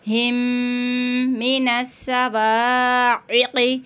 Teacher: اب میم ساکن کے بعد میم آ رہا ہے تو یہاں پہ بھی گنہ ہوگا